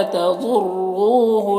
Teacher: ضاد حروف مستعلیہ میں سے پر پڑھیں گے۔